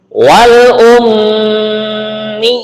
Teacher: Nah, ini yaknya juga bertasdid. Kemudian yaknya diharokati kasroh panjang 2 harokat ya